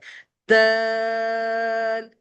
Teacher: اس کا مخرج تا والا ہی ہے، یعنی زبان کی نوک سامنے والی دانتوں کی جڑ پر لگتی ہے اور ہم د کے ساؤنڈ کو کھینچتے ہیں